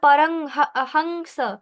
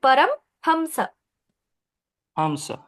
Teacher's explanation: না না ম হসন্তর মত উচ্চারণ হবে